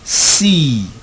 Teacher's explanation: Now if I say see, my jaw does not drop, so my lips are not rounded. Instead, my lips are spread. Say C, E, my lips are spread because my jaw does not drop.